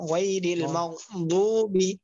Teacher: অনেকে মাগদুবি পড়বে, অনেকে মাগজুবি পড়বে। দুটোটার মাঝামাঝি বলতে হবে